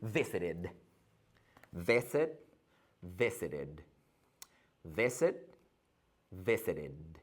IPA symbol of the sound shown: ɪd